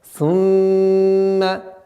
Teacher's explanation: В данном случае мим у нас в размере двух огласовок. Мы удерживаем назализацию.